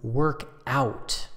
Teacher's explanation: notice the stress usually goes on out